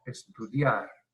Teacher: Palabra aguda, lleva acento en la última sílaba. Como termina en R, no lleva tilde.